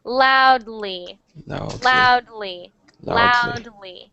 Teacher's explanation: It's a tiny D sound. But many people, it's like an invisible D.